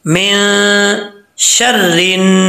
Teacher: मीम के बाद नून साकिन आ रहा है, नून के बाद शीन है हरूफ इख्वा में से, तो यहाँ पे एक अलिफ की मकदार गुना किया जाएगा। नून साकिन का इख्वा है यहाँ पे, रा के ऊपर जबर है, रा के नीचे जबर जेर है और रा के ऊपर शद है, तो शीन रात भर शर।